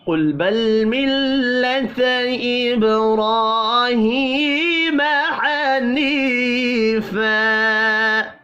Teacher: قوف پر پڑھیں گے، با ساکن پر قلقلہ کرنا ہے، را کھڑی زبر کی وجہ سے پر پڑھا جائے گا، ایک الف کے برابر کھینچ کر بھی پڑھیں گے، ہا کھڑی زیر کی وجہ سے ایک الف کے برابر کھینچ کر پڑھیں گے